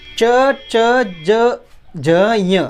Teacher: हमारी जीवा हमेशा तालु से टकराती है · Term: तालव्य